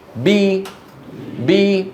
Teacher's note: تبتعد الشفتان ولكن يصاحب ذلك ارتفاع لوسط اللسان وانخفاض الفكر السفلي باسمي بي انتبهتم اما المقلقل فيخرج بالتباعد ولا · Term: المكسور